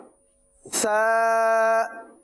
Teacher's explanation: जबान का सिरा और ऊपर के दांतों के अंदरूनी किनारे आ रहे हैं